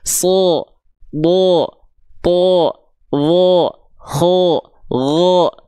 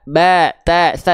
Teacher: Ketika dia berharokat fathah, dia tidak dibaca dengan vokal A, tapi condong pada vokal O. Bo. Ya, huruf-huruf tebal ketika berharokat fathah itu akan condong pada vokal O. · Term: huruf yang tebal